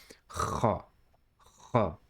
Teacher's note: friction from the back of the throat. It sounds similar to the kha in Bach in German language. · It is a strong throaty kha. It should feel like scraping the throat slightly, like this.